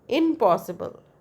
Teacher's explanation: when n becomes m before p impossible in plus possible impossible but that is impossible so that n become m in case of impossible. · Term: assimilation